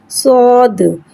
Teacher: صاد کو ایک الف یعنی 3 حرکات کے برابر کھینچ کے پڑھیں گے۔ صاد میں سیٹی کو ظاہر کر کے پڑھیں گے۔ صاد حرف مستعلیہ ہے، لہذا اس کی آواز حلق سے موٹی ادا ہوئے گی، اور صاد میں دال میں قلقلہ کو ظاہر کر کے پڑھیں گے۔